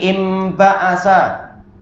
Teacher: Tulisannya pakai nun tapi cara bacanya pakai mim